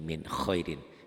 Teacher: Tulisan dan bacaan sama. Ditulisnya min khairin, dibaca juga min khairin. Tanpa ditahan, tanpa dengung, dibaca apa adanya, tanpa ditekan juga ya, hanya latihannya aja ditahan. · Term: idhar